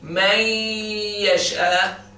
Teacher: When you say man yasha, the noon has been gone completely. You don't pronounce the noon at all.